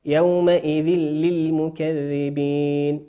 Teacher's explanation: وقوله سبحانه وتعالى في نفس الآية يومئذ للمكذبين إدغام من غير غنة لأنه أتى بعده حرف اللام واللام من حروف الإدغام بغير غنة.